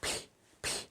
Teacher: There's no vibration. It's just air, P, right?